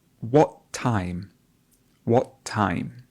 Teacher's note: the air comes up, what stops at the epiglottis and does not continue. And this is a feature called the glottal stop.